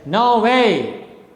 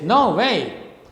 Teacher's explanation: both the syllables are stressed both syllables are strong syllables